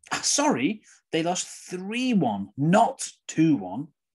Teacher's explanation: So again, the apology, sorry, the correct information, 3-1. The negative and the mistake, not 2-1. All those are usually stressed when we make corrections, self-corrections.